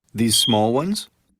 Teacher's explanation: Rising intonation to ask for clarification.